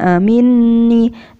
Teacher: Jadi membaca dengung itu harus minni. Nah, nunnya itu dengung yang lama.